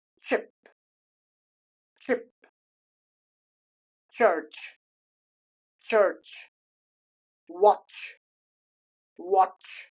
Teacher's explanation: combination of stop and fricative sounds